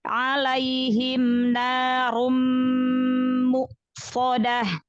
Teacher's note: Buka lagi ya tenggorokannya, huruf ainnya dari tengah tenggorokan ya